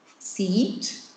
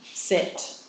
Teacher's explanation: this is the um High front vow in English which tends to be long and then you've got the slightly lower one